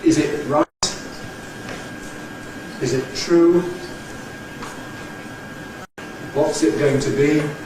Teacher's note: the unstressed pronoun ‘it’ is really nowadays very generally pronounced with a glottal stop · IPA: ɪʔ